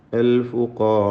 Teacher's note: ദീർഘത്തിലും റാഇൻ്റെ തഫ്ഖീം അലിഫിനും ഉണ്ടായിരിക്കണം, നിലനിർത്തണം എന്നത് ശ്രദ്ധിക്കുക. റാഉം അലിഫും തഫ്ഖീമോട് കൂടിയാണ് ഉച്ചരിക്കേണ്ടത്, തടിപ്പിച്ചുകൊണ്ട്